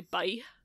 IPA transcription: bʌi